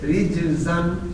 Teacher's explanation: تو جیم جب سائلنٹ پڑھی جائے گی وہاں بھی قلقلہ آئے گا